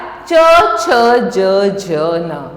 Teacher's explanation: फिर आते हैं हम च वर्ग पे, तो यहाँ पहला व्यंजन च आया, च छ ज झ न, इसको हम तालु के स्थान से उच्चारण करते हैं।